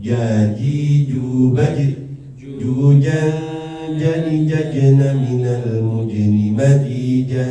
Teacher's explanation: Tidak keluar nafas. Tidak keluar nafas ya. Jangan ca tapi ja ya.